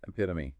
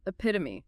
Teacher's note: Stress on the second syllable. Pit. 4 syllables.